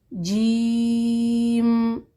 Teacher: جیم سخت حرف ہے، زبان کے درمیان اور اس کے اوپر کے مقابل تالو سے ادا ہوتا ہے۔ جیم کی آواز کو زبان کی نوک سے ادا نہ کیجیے ورنہ اس کی آواز صحیح نہیں آتی۔